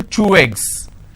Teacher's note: So I'm using way sound in between these two eggs. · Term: linking